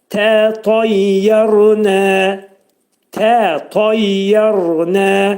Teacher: Tənin, birinci tənin məxrəcini tə, ikincini ta demək lazımdır.